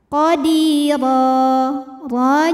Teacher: huruf ro dibunyikan secara tafkhim karena berbaris di atas maka dibacanya tebal